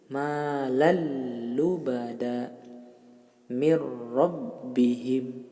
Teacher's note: Kalau yang bila gunnah dengan tidak mendengung, dengan mempercepat bacaan hanya menekan tasydidnya saja